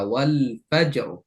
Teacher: জিমে কলকলা করে রটা মোটা